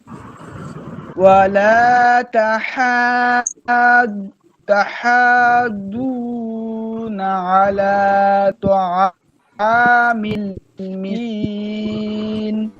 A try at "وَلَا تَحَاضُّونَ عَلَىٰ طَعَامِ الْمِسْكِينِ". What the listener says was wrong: এই দদ ওয়ালা তাহাদু দু মোটা হবে একটু, তাহলে সুন্দর হবে।